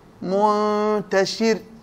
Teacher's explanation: الراء مرققة عند الوقف، لكن لو وصلنا تكون مفخم